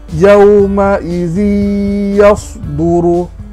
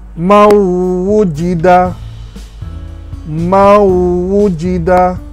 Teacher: dibaca secara idgham beserta dengung